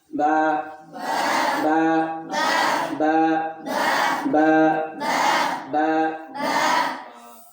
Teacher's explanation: দুই ঠোঁটের ভিজা অংশ থেকে। · তাহলে আমরা বুঝলাম কি এই বায়ের উচ্চারণটা দুই ঠোঁট হইতে হয়।